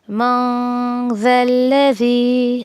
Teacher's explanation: یہاں پر دیکھیں کہ آگے آیت کے اگلے حصے میں نون ساکن کے بعد ذال آیا ہے. اخفا کا 2 کاؤنٹ دینا ہے آپ کو.